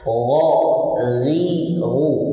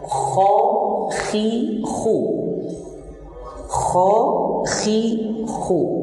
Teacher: di ghain tidak ada hikah, tidak ada hikah, adapun pada kha ada hikahnya. Pada ghain itu tidak ada garukan.